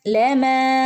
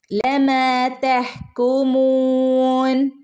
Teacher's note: ലമാ ഇവിടെ 2 ഹറക്കത്ത് നീട്ടണം കേട്ടോ.